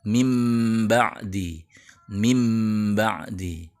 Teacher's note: bunyi m nya masih ma asli seperti kata Mim ba'di [Musik] itu dengan merapatkan bibir tapi tidak menyamarkan bunyi m nya